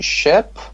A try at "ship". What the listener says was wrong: it's not ship. You're just let's say, or exaggerating the A. It's between A and E. It's ship.